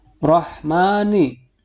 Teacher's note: huruf ro-nya dibaca tafkhim atau tebal sebab berharokat fathah.